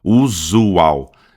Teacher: Então o S vai virar Z, né? Vai ser o símbolo fonético Z, tá? E aqui a gente tem de novo J, a acentuação mais forte aqui, da sílaba mais forte, U, e aqui a gente tem um prolongamento, aqui é um U, é uma vogal longa.